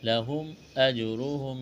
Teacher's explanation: میم ساکن کے بعد حمزہ ہے، اظہار کریں گے · جیم پر قلقلہ کریں گے، جیم ساکن ہے